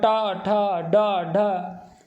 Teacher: हमारी जिह्वा बार बार मूर्धा पर स्पर्श कर रही है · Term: स्पर्श व्यंजन